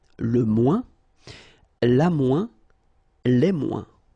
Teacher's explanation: we don't pronounce this final S